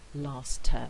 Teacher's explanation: it's not as these two constants here have the same voice i can get rid of the t and i end up with last term where the t is missing so the t would go in that position there it's the